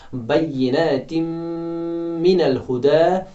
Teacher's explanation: दो हरकत के बराबर हम पढ़ेंगे, गुना करेंगे, नाक में से थोड़ी बहुत आवाज़ निकलेगी